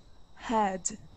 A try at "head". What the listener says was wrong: Okay, move your tongue back just a little bit more. Okay, head. Okay, now when you say the word did, okay, pronounce that word for me, please. Did. So you know that D right there in your at the very beginning?